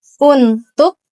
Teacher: menggunakan glotal karena di akhir kata yang diucapkan dengan menutup pita suara lalu dikeluarkan secara tiba-tiba